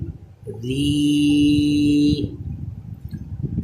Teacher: جب را کے نیچے کھڑا زیر ہے اس وقت باریک آواز ہونی چاہیے